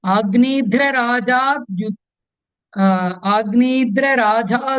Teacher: Agnidhra, Tha is Mahaprana here.